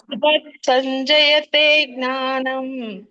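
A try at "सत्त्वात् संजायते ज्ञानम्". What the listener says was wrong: ಸತ್ವ ಸಂಜಾಯತೆ, ಜಾ ದೀರ್ಘ ಇದೆ, ಸಂಜಾಯತೆ ಜ್ಞಾನಂ.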